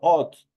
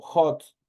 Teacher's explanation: la H que es una H aspirada que se transforma una J para poderla pronunciar. Por ejemplo, yo no digo hot, yo digo hot.